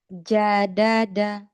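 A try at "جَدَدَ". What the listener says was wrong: Masih jimnya.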